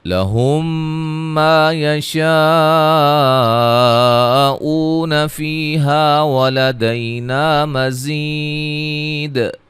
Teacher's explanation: دال پہ جو قلقلہ ہے اس کو واضح کریں گے وقف کی صورت میں۔ ملانے کی صورت میں نون تنوین کا ادغام ہوگا۔